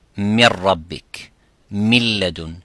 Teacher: And because of that closeness and taqarub, the noon sakina or tanween, soon as it comes next to the ra or next to the lam, the noon becomes, or the tanween becomes silent.